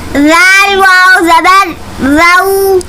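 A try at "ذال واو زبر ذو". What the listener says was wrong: ٹھیک ہے۔ اسے زال پڑھنا ہے، اسے زا نہیں پڑھنا، یوں نہیں پڑھیں گے زا واو زبر زو، بلکہ زال اور زا میں فرق ہوتا ہے۔ تو یہاں پر زال ہے، اپنی زبان کو دانت کے اندر لے آنا ہے، اور پھر اس طریقے سے زال ادا ہوگا۔ زال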